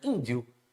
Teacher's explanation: Nesse segundo i, ele quase que não aparece. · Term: semivogal